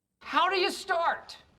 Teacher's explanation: puts a lot of emphasis on the verb start so much so that he releases the t at the end of it when we'd normally turn it into a stop t check it